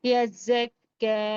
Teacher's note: کاف پر خاص زبر ایک الف کی مقدار کھینچ کر پڑھیں گے، یا کو چھوڑ دیں گے، کوئی حرکت نہیں ہے.